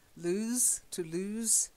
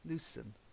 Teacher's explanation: Lose to lose has that stronger S. Okay, loosen has a soft S.